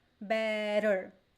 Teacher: we call it flap t so you have this the the the tongue it goes up and down and vibrates